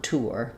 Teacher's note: I have the vowel to vowel linking between the ooh and the er. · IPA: /ˈtuɚ/